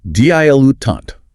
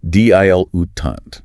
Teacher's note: Stress on the first and last syllables